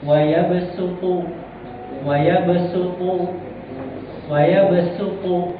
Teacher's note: Jadi dibaca dengan sin, bukan dengan huruf shad, tapi huruf sin.